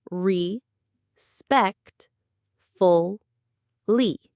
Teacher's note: The main stress is on the second syllable